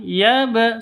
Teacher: bacaan qolqalah ya harus dipantulkan yaab seperti itu Qalqalah Sura karena ada di di tengah kata